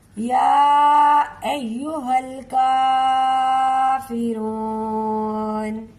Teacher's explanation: हा को डायरेक्ट लाम से मिलाएंगे, काफ को एक अलिफ के बराबर खींच के पढ़ेंगे